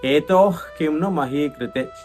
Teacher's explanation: ఈ శబ్దం ఏదైతే ఉందో దాన్ని జిహ్వామూల్యం అంటారనమాట. విసర్గం తర్వాత కా వస్తే ఆ పలికేటటువంటి విధానాన్ని జిహ్వామూల్యం అంటే నాలుక యొక్క మూలం నుంచి శబ్దం రావాలి.